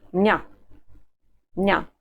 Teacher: The pronoun меня becomes ня